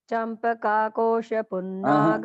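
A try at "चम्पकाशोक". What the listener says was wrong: चंपकाशोक, चंपकाशोक, चंपक और अशोक, चंपका। Okay, you are adding एन आकार।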